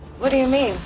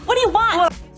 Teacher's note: We reduce do, drop the T from what, and connect the two words. So instead of what do, we say whata. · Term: connected speech